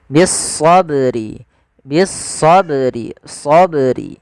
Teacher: ba yang berharakat sukun maka ini kita namakan dengan bacaan Qalqalah Qalqalah yaitu bacaan yang dia memantul